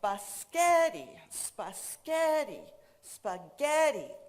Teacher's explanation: So biscotti, spaghetti, spaghetti all mean the same things to a native speaker because the center syllable was pronounced louder, longer, and higher than the rest of the syllables